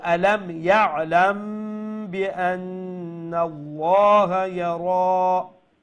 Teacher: after the mim sakin is ba, so we will do light nasal sound ikhfa shafawi